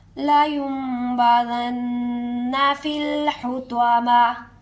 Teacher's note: حطمہ ویسے حطماتی ہے، لیکن جب وقف کریں گے تو تا نہیں ہا کی آواز آئے گی